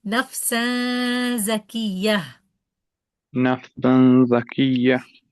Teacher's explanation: za articulation point is tip of the tongue behind the bottom two teeth, okay? Behind the bottom two teeth. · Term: zay